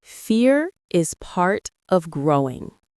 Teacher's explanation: The R in fear should be soft but strong, not rolled. Let the word growing sound smooth, not rushed.